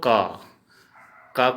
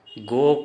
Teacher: हमेशा हिंदी में उच्चारण अ होता है और असमिया में उसी को उच्चारण अगर करेंगे तो ओ उच्चारण होगा